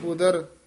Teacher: ਉਦਰ ਪੋਲਾ ਹੀ ਬੋਲਣਾ ਉਧਰ ਨਹੀਂ ਕਹਿ ਦੇਣਾ